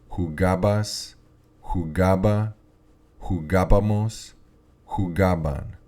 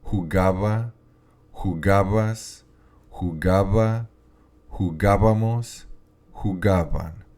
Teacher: I'm going to say the B um but I'm going to give it a vibration sound because it is between the two vowels